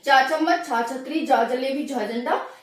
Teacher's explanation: जीभ ऊपर टच होगी हमारी तालु पर, तो इन्हीं को हम कहते हैं तालु वर्ण